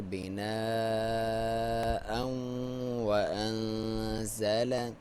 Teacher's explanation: یہاں پہ ادغام ہے واو کے ساتھ تنوین کا جو حمزہ کے اوپر ہے اور غنہ کے ساتھ ہے، ناک میں سے آواز نکالیں گے